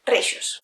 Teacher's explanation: A Reixos hi ha una palatalització de l'alveolar fricativa i una duplicació del morfema de plural.